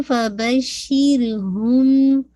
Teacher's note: فبشر را کو ہیوی نہیں کیجیے گا کیونکہ را سے پہلے شین کے نیچے کسرہ ہے